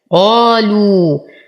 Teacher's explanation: نعطي القاف أعلى درجات تفخيم لأنها مفتوحة وبعدها ألف